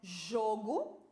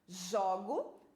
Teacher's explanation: Agora eu tenho jogo do verbo jogar, né? Então, jogo, som fechado. Jogo, som aberto.